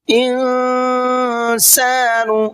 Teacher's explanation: یہاں پر نون کے اندر اخفا کریں گے اس لیے کہ یہاں پر نون ساکن کے بعد میں سین ہے اور سین اخفا کے حرفوں میں سے ہے۔